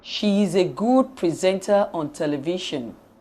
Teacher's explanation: we use a falling tune for the following simple statements